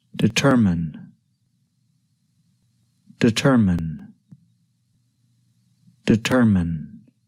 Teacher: the word we can divide the word into three syllables determin the stress is on the second syllable tur